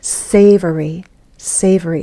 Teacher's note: Three syllables. The first one is stressed.